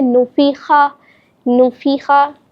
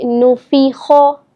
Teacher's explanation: یہ غلط ہے, اس طرح نہیں پڑھیں گے. خو کو یعنی موٹا کر کے ادا کیا جاتا ہے کہ وہ حروف مستعلیہ میں آتا ہے